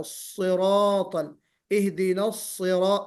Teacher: स्वाद थोड़ा सा मुंह भर के निकालना